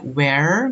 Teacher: use of non-rhotic R. Suara R tidak dibunyikan setelah vowels. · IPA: /r/